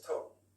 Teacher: in a Cockney accent, it's tall. So I'm almost like a W sound